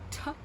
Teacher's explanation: in reconstructed forms, it makes this aspirated T sound, like in the beginning of top